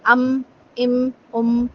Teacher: میم میں آپ محسوس کریں آپ کی ناک کے اندر آپ کو ایک آواز، ایک وائبریشن فیل ہوگی، وہ غننے کی آواز ہوتی ہے، غنہ ہوتا ہے، ام، ام، ام۔